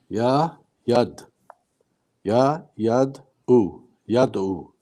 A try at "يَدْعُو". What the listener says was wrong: Here, we don't want to pull. We don't want to say ya, yad. No, so ya, not ya, ya, even shorter than that, almost half a second.